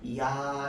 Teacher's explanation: 그래서 야를 오래 발음하면요 야라고 하면 이 야는 앞에 조금만 소리 나고요 그 뒤에는 계속 아 소리만 납니다. 야 이렇게 소리 나요. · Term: 이중모음